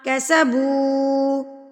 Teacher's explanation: واو ساکن سے پہلے اگر پیش آ جائے تو یہ واو مدہ کہلائے گا. واو مدہ کو آپ نے ایک حرکت کے برابر کھینچ کے لمبا کر کے پڑھنا ہوتا ہے